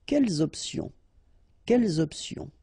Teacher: the concept of this liaison is that you don't make any pause between the two words.